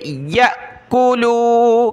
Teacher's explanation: یہ حمزہ ساکنہ ہے, جھٹکا دیں گے. یأکلوا, کاف پیش کو, لام واو پیش لو.